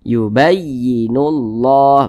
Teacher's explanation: Huruf lamnya ini enggak dibaca nih. Ada tulisannya tapi dia enggak dibaca. Langsung masuk ke huruf yang di depannya. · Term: idgham syamsiyah